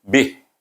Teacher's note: Kalau tidak, kita wakaf dekat sini, kita matikan saja huruf yang terakhir, iaitu huruf ha mahfuz hasan bunyinya bih. Bih, daripada bibir pergi kepada pangkal halkum, jauh perginya.